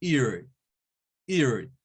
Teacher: el diptongo I-A. I-A. Es como decir una I y el schwa.